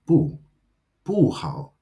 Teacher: bu is fourth tone, and it stays that way when it comes before any word that is first, second, or third tone